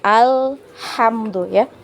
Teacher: jadi di alirkan sedikit huruf lamnya ya ketika sukun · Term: lam sukun